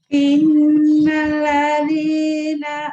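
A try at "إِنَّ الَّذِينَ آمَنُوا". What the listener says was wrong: Innal yang ditahan nalnya, yang dibentakin. Ya, kalau Ibu inal, innal innalladzina amanu wa amilus solihat.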